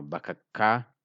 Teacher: So it's only ka that is strong because we wrote it already strong as a deep sound by doubling the consonant.